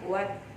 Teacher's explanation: Karena ada lam, kemudian sesudahnya ada huruf ta ya. Jadi lamnya tidak dibaca langsung ke huruf ta. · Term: alif lam syamsiyah